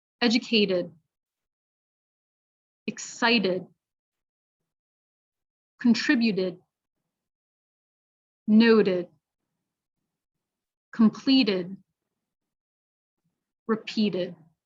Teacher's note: is saying a d sound instead of a t again so past tense it's gonna sound like a did the last syllable will sound like did